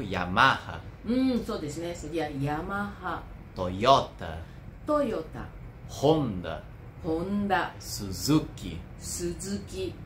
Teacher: nós temos uma clara tendência a acentuar a penúltima sílaba né das palavras de origem japonesa